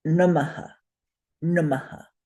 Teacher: the visarga is a rough, breathy sound for the previous vowel. So in nama, we would say na, ma, namaha.